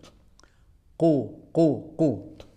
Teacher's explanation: Diucapkan dengan ku itu sudah di pangkal lidah ya. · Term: qaf